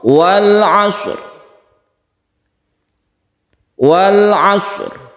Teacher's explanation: Maka ketika kita mematikan atau memberi sukun shad, kita juga memberi sukun ra, sehingga huruf ra-nya tersebut masih kelihatan, masih terdengar. Walaupun kita itu tidak memberikan tekanan yang kuat, akan tetapi ra ini harus ada, entah itu setengah ataupun sepertiga dari huruf ra, suaranya itu harus ada. Wal 'ashr, seakan-akan memang qalqalah, akan tetapi ini bukan qalqalah karena kita langsung ke ra.